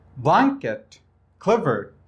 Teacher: دوستای عزیز، ما first syllable هجای اولی blanket و همونطور هجای اولی clever را بلندتر میگیم نسبت به هجای دومیشان